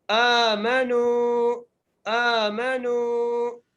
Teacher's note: حمزہ کے اوپر کھڑی زبر ہے، میم کے اوپر زبر ہے اور نون کو ایک الف مقدار کھینچ کے پڑھنا ہے